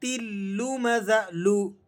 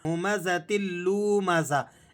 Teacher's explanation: لام کو کھینچیں گے نہیں۔ بعض ساتھی یہاں پر لام کو کھینچ دیتے ہیں، ہمزۃ لمزہ اس طرح سے پڑھتے ہیں۔